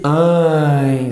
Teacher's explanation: A nasalização. Então, mãe é um ditongo decrescente. Além disso, ele é nasal, tem um som nasal